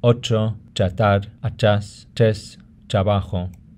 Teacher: In some dialects, R coming after a T has a sound that's similar to English. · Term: TR combination